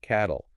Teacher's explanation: adding the L forces a second syllable. That L sound becomes its own syllable nucleus.